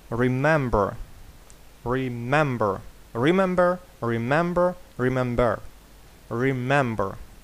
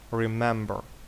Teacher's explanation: наголос падає на другий склад Remember